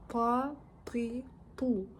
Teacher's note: Па әріпін дұрыс дыбыстау үшін тіл жоғарғы алдыңғы күрек тістердің етіне ұрылып тию арқылы жуан дыбысталады. Па. Жай ғана тә немесе т емес, па.